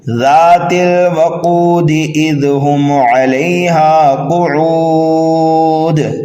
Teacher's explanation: मद्दे आरिज की वजह से इसको खींच रहा हूँ